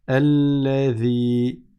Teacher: Et donc, on ne dit pas allazi, zi, c'est pas un z, mais on sort la langue un petit peu. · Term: dhal